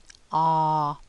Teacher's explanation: it's a long sound. The mouth is very open. Ah, the lips are rounded, so open and rounded, and the tongue is at the back of the mouth.